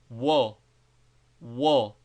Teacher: is equivalent to the English W, and is pronounced by a partial bringing together of the lips